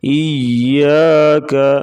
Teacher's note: یا کے اوپر شد آ گیا، اسے تھوڑا سختی سے پڑھیں گے دبا کے